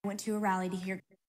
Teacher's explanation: There's no true T and there's no U vowel. It's more of a flap T, and then the vowel is the schwa, rallied. So we make a T a flap T when it comes between two vowels.